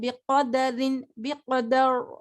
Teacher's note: را کو باریک پڑھا، پھر جب وقف کیا تو را کو موٹا پڑھ دیا